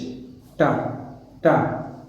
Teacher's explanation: The tip of the tongue touches the ridge. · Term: alveolar sound